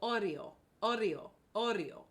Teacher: let's add a little flip of the r if we can